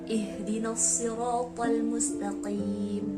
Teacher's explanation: makhraj atau makharijul huruf ha itu berada di tenggorokan paling bawah.